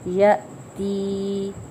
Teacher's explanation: مد اصلی ہو رہی ہے ایک الف کے برابر کھینچیں گے